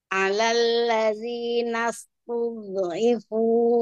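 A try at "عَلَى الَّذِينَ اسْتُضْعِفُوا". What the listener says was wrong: Terasa sekarang Bu, terasa? Masih ada pantulan sedikit ya?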